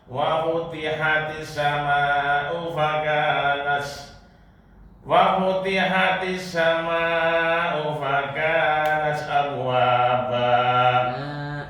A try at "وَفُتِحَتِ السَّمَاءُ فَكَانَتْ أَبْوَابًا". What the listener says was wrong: panjang lagi 6 harokat